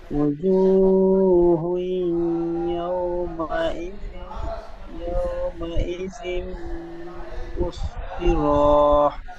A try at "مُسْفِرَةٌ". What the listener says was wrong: মুসফিরহ র বলে টান হবে না।